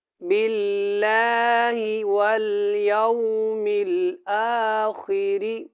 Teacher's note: اللہ والا لام کو جب ادا کرنا ہے تو اس سے پہلے زیر ہے تو اس کو موٹا نہیں پڑھنا